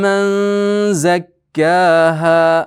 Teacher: nun zan ichiga yashiriladi. Ixfo bo'ladi.